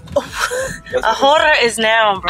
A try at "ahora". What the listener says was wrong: Ahora. You're saying The H too hard. H. Yeah, it's no silent H.